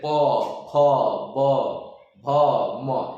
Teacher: प फ ब भ म यानी ओष्ठ से, किससे उच्चारण हो रहा है इसका, ओष्ठ से